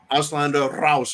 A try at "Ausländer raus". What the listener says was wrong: Rouse. You got to roll that R.